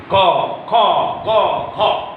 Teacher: देखिए क, ख, ग, ख, ये चारों वर्ण कंठ से बोले जा रहे हैं